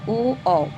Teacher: इसके उच्चारण में कंठ और ओष्ठ दोनों की सहायता लगती है तो ओ और औ कंठोष्ठ है